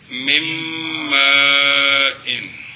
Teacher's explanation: اچھا جی من مائن، نون ساکن کے بعد کون ہے؟ میم ہے، تو نون کو میم کر کے ادغام کریں گے، غنہ بھی کریں گے